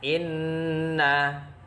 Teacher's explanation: hukum bacaannya adalah ghunnah cara membacanya dengung 2 harokat